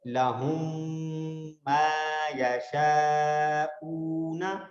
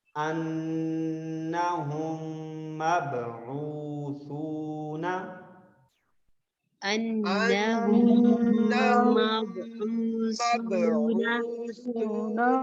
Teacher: میم ساکن کے بعد اگر دوبارہ میم آ جائے تو وہاں پر مرج ہو جائے گا، یعنی 2 میم جو نا ایک میم میں تبدیل ہو جائیں گی، ایک میم میں بدل جائیں گی، ٹھیک ہے. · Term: ادغام